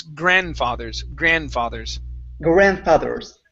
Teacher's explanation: in grandfathers, the D is not pronounced. Okay, so we don't need to pronounce that.